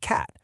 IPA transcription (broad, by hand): æ